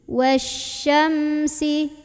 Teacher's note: Bibirnya rapat lagi, jangan dilepas sebelum bunyiin si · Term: mim